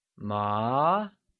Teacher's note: it is said with a mid-rising tone, or second tone. · The second tone is denoted by an upward slant from left to right. It starts at the middle of the tone and goes to the top, and is similar to saying, what, in English. This will now be referred to as the mid-rising tone, or the second tone.